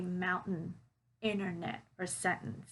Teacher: t is like when we leave out that t sound in words like internet or sentence or mountain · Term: glottal t